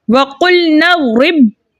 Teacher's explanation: तो हमने बा को मजबूती और जमाव के साथ पढ़ना है क्योंकि इधर तशदीद कायम हो रही है · एक साकिन और एक मुतहर्रिक के मिलने से यहाँ तशदीद कायम हो गई, ठीक है। तो बा अब दो मरतबा पढ़ा जाएगा। पहली मरतबा रा के साथ मिलकर और दूसरी मरतबा अपनी हरकत के मुताबिक यानी ज़ेर के साथ पढ़ा जाएगा